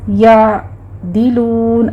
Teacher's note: یعدلون میں ذرا سا منہ کھولیے اور آئین کو وسط حلق میں لے جا کے سٹاپ کرنا ہے